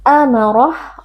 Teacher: Mad jaiz munfasil dibaca panjang 4 atau 5 harakat. Amarah, ra huruf tafkhim kita baca tebal karena di sini ra berharakat fathah